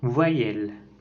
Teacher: Nous avons les voyelles orales mi-ouvertes. La voyelle E est antérieure et mi-ouverte, étirée et orale.